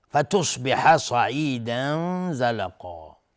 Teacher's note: هر دو صاد یعنی فتصبح و صعیدا، هر دو از حروف استعلاء هستن، غلیظ تلفظ میشن